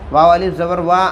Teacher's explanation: الف سے پہلے زبر ہے، الف مدہ ہوگا، تھوڑا کھینچ کر پڑھیں گے۔